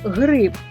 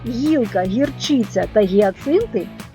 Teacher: в слові грип звук г твердий а в словах гілка гірчиця та гіацинти м'який